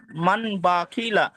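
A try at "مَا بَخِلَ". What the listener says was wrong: মান না মাম। মাম বাখিলা। বাখিলা না ভাইজান, আপনি দেখেন মাম বাখিলা। মানে আপনি এটাকে বানান করবেন, ইজরা করবেন, রিডিং করবেন। মিম মিম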